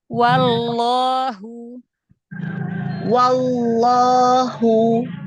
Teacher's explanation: langsung ke lam tebalkan lafzul jalalahnya